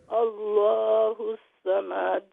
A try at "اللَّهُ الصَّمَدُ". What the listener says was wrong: صمد میم لمبا نہیں میم رفر فتحہ. جی میم refer فتحہ فتحہ رول short sound. اللہ الصمد.